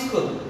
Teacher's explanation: প্রথমেই উচ্চারণ করতে গিয়ে প্রথমেই একটা স্বরধ্বনির আগমন ঘটিয়ে ফেললাম, এটাকে বলা হয় আদি স্বরাগম